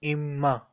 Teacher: there is a sukoon on noon and there is a shadda on meem, both come together, so we will omit the alphabet noon sakin. It will become imma.